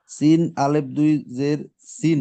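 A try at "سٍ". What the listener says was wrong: না না এখানে তো ইয়া নাই, দেখেন শুধু সিনটা আছে, সিন দুই জের,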